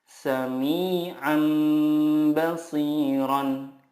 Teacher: Iqlab adalah nun sukun atau tanwin bertemu dengan huruf ba. Cara membacanya, mengganti nun sukun dengan mim sukun dan disertai gunnah 2-3 harokat.